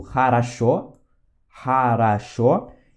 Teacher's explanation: o O só vai ter som de O quando ele for tônico. E quando ele for átono, ele vai ter som de A